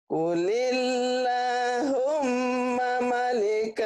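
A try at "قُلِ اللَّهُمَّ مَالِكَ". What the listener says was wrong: Manya panjang. Manya dipanjang nih.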